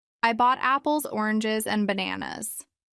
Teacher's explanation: it rises in the middle and falls at the end giving a natural Rhythm to longer sentences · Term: rise fall intonation, Rise-fall intonation